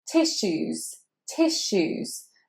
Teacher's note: tissues is obviously not said with a S. It's said as a sh in the middle there. So the second half of the word actually is said more like shoes.